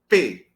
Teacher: Então, oclusiva, porque dá essa explosão, também chamada plosiva. Bilabial, porque eu utilizo o lábio inferior e o superior. Desvozeada, porque eu boto a mãozinha aqui, bem no meu gogó, né? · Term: oclusiva, bilabial